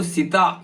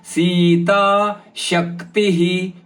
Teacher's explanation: ಸೀತಾ ಸಿ ಮತ್ತು ತ ಎರಡು ದೀರ್ಘ ಪದಗಳು